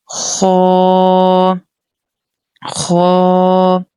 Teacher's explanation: مستعلیہ letter ہے، bold letter ہے، تھکر tone میں پڑھیں گے